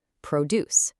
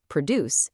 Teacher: When it's a noun, you absolutely must stress the first syllable, produce. If you stress the second syllable, produce, it becomes a verb and the examiner will immediately dock you points.